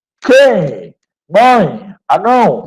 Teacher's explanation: Vocês percebam que o som sai pelo nariz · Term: Ditongo nasal